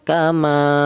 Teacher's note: panjangnya satu alif atau dua harakat atau dua ketukan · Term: mad thabi'i